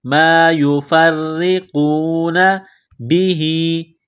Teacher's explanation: را کے نیچے زیر ہے تو را کو باریک کرنا ہے، قاف کو موٹا کرنا ہے، قاف کو واو کے ساتھ ملانا ہے